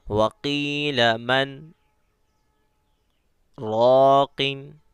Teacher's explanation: وقیل من کہہ کے آواز کو روک دینا ہے، لیکن سانس توڑنا نہیں ہے، ٹھیک ہے؟ وقیل من راقن، میں نے ایک سانس میں اس کو پڑھا ہے، وقیل من راقن، تو آپ کو بھی ایک ہی سانس میں پڑھنا ہے اور سانس کو توڑنا نہیں، صرف آواز کو ختم کرنا ہے من میں، وقیل من راقن، ٹھیک ہے؟ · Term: سکتہ